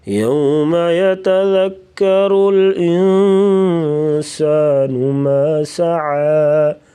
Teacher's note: يَتَذَكَّرُ الْإِنسَانُ مَا سَعَى، یتذکر ذال کو نرمی سے پڑھیں گے، را کے اوپر زبر تو را کو موٹا پڑھیں گے